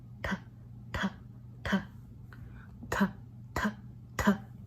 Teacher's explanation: whenever you use the sang digut and you pronounce it ta, ta, ta, ta, ta, ta, then you should feel air come out. And this sounds more like a double T rather than an ambiguous DT.